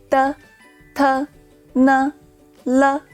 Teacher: your tongue touches the gums gently and the airflow comes out from the two side of your tongue